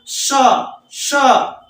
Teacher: तालव्य स इसलिए कि इसका तालु से उच्चारण होता है